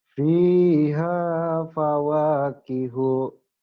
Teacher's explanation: cuma satu alif aja, dua ketukan, jangan panjang-panjang.